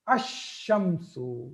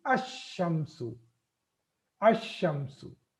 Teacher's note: when I attach al to that, I am not pronouncing lam.